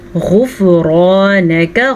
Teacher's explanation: غین کو پر پڑھیں، را کو پر پڑھیں، اور پھر سے ہمارے پاس الف مدہ ہے، الف سے پہلے زبر ہے اس لیے یہ الف مدہ ہے۔